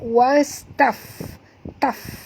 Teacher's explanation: dekat fa ni ada mati, tanda mati, menunjukkan kita kena bunyikan hamas pada fa.